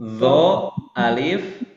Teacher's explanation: Ujung lidah bertemu dengan gigi seri atas. Kemudian dia memiliki sifat yaitu tafkhim, ya. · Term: huruf zo